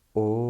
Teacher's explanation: chant Om in a prolonged way, in a low tone